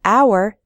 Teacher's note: in the word hour the H is silent so we say an hour we